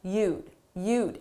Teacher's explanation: It's difficult to hear that d because it's very soft